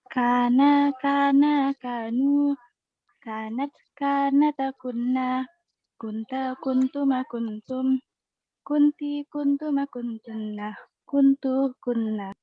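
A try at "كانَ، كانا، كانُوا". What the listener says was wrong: Ahsan.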